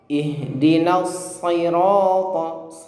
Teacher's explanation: huruf shad ini memiliki sifat tebal ya. Kenapa dia tebal? Karena dia punya sifat isti'la ya, pangkal lidahnya terangkat seperti itu. Nah, maka dibaca tebal meskipun kasroh.